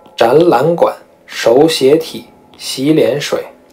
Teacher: 这种前两个字是一个字组，后面再加上第三个字的情况，这种呢就可以把前两个字都读成二声